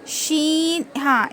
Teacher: زبان کا بیچ کا حصہ اوپر کے تالو میں لگانے سے شین ادا ہوتا ہے